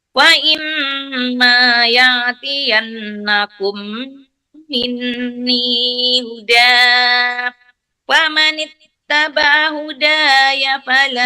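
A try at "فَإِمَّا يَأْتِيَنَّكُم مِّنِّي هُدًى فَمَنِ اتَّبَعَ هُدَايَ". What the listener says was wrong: Di huda itu nggak boleh. Sesudah ini minni hudan itu kan ada lam. Jadi itu tuh nggak boleh berhenti.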